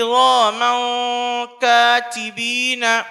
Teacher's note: تنوین و نون ساکن کی آواز کو 1 الف کے برابر ناک میں چھپا کر پڑھیں گے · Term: اخفا